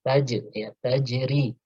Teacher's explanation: karena jim bukan termasuk huruf isti'la, maka qalqalahnya tarqiq, ya, qalqalahnya tipis